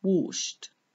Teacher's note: The ed ending is pronounced t. We say washed because it comes after the sh sound